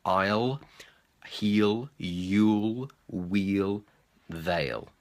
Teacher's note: it's all about pronouncing that L sound at the end, because sometimes we can miss that sound and it sounds like you're just saying I or they. So make sure you're getting that L in at the end.